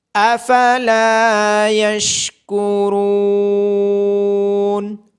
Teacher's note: افلا یشکرون، لام کے بعد الف مدہ اور را کے بعد واو مدہ ہونے کی وجہ سے ان دونوں کو لمبا کیا جائے گا، اور را کو موٹی آواز کے ساتھ پڑھا جائے گا